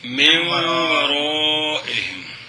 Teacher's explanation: نون ساکن کے بعد واو ہے تو نون کو واو کریں گے اور واو کا واو میں دعام کریں گے غنے کے ساتھ